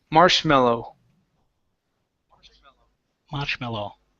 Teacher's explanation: sure to pronounce that o sound marow instead of marshmallow Okay you need an oo sound at the very end